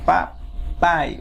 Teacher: o pai no final tem a sílaba mais forte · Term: oxítona